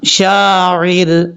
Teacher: را ساکن سے پہلے زیر ہے تو را بریک پڑھا جائے گا، اس کو پر نہیں پڑھنا